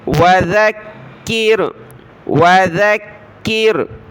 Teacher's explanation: ذال پر زبان نکالی، ذال کو ملایا کاف کے ساتھ، کاف کو را کے ساتھ، کاف کو سخت کریں گے تشدید کی وجہ سے،